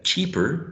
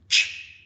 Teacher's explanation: Then I have the adjective cheaper, right? Ch is voiceless, is post-alveolar or alveopalatal, and it is affricate. I think it's the only affricate sound that I have in this selection, in this excerpt.